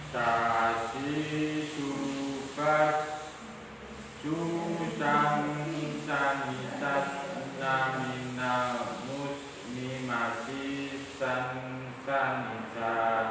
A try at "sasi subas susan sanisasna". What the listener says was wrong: Desisnya ditambahin Pak, coba Pak. Ulangi Pak.